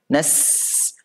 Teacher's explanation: Sin itu nafasnya mengalir. Nas. Nah, jadi harus mengalir, tidak boleh dipotong. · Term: huruf hamas